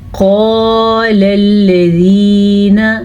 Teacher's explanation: कज़ालिक क़ाल अल्लज़ीना मिन क़ब्लिहिम, कज़ालिक, काफ ज़बर का, ज़ाल खड़ी ज़बर ज़ा, कज़ालिक क़ाल अल्लज़ीना, क़ाल अल्लज़ीना, मोटा क़ाफ पढ़ेंगे, इसको अलिफ मद्दा के साथ पढ़ेंगे